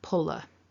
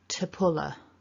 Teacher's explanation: paul ends with a consonant sound that dark l and the next word is a vowel sound so what we want to do is connect them link them together